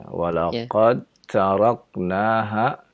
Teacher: Dal bertemu dengan ta, maka terjadilah idgham. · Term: idgham mutajanisain